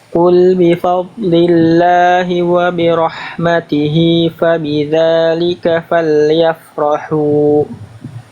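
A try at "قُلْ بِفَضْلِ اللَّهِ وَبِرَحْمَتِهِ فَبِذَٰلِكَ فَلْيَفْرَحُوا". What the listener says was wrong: Oke, dotnya tebal, kurang ngalir. Dotnya kurang mengalir ya. Qul bi fad. Nah, itu harus ngalir tuh bunyi itu harus ngalir. Ya, karena itu bunyi huruf dhad. Coba tebalkan lagi dotnya. Alirkan. Maaf, alirkan, kurang dialirkan tadi.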